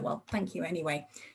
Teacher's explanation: And you get this very flat, sort of unenthusiastic prosody. So the whole rhythm, the stress, the intonation suggests that the patient's expectations have not yet been fulfilled.